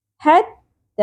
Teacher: حتی ایک الف کے برابر کھینچیں گے، مد اصلی ہے